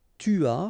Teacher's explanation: final S not pronounced